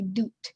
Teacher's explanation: alveolar ridge and so they want to start there too and they'll start with a voiced version of a t as a d